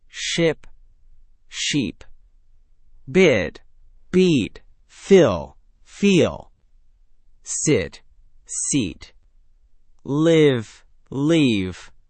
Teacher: Feel your lips spread wider and your tongue lift for the second word in each pair. · These are two completely different sounds, and mixing them up can literally change the meaning of your sentence. For the short I in ship, your mouth is relatively relaxed, tongue slightly lower and more central.